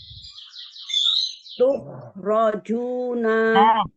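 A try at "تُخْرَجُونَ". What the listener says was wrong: Ho-nya balikin dulu ke asal mulutnya. Jadi nggak jadi ho-nya nggak jadi lemah. Tukhrajuna.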